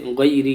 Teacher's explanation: را پر زیر آئے گا تو را باریک ہوگی، را کے اوپر اگر زیر آئے تو را باریک ہوگی.